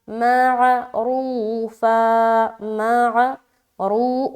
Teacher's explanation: रा को मोटा रखते हुए वाव मद्दा